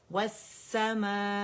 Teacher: حمزہ قطع ہے نا، اس کو ہم نے بہت واضح پڑھنا ہے کیونکہ یہ اپنے سے پہلے آواز کو کاٹے گا. مد کی وجہ سے بعض اوقات غلطی کیا کرتے ہیں اسٹوڈنٹ کہ الجوف سے ہی حمزہ ادا کرنا شروع کر دیتے، تو وہ ہم نے نہیں کرنا.